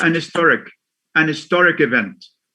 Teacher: They say an historic event. The H is silent, like we say an honest man